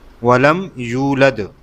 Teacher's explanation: یا کو تھوڑا سا کھینچنا ہے کیونکہ اس کے ساتھ واو مدہ ہے، اور اس کو ایک الف کے برابر کھینچنا ہے، یعنی 1 سیکنڈ۔ ولم یولد، پھر آگے ولم یکن لہ، اس کو ہو کو بھی کھینچنا ہے 1 سیکنڈ تک۔